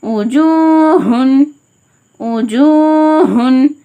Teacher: கொஞ்ச கணமா அடித்தொண்டை ஹ